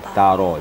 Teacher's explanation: Ada tarikan. Ra sifatnya tafkhim. Tafkhim, kemudian ta tarqiq atau istifal. Ta istifal, ra tafkhim. Jadi dia menarik.